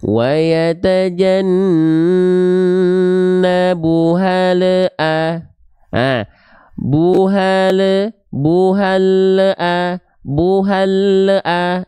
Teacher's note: di ujung pelafalan lam sukunnya itu ada bunyi vokal yang keluar yaitu bunyi vokal e ya E itu kalau di bahasa Sua itu disebut dengan e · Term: memantul